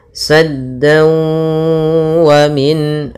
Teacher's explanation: Tapi karena bertemu dengan waw yang mana waw termasuk huruf idgham bi gunnah, maka langkahnya adalah kita masukkan ke waw tanwinnya, suaranya sehingga menjadi saddawa. Kemudian setelah itu ditahan gunnahnya.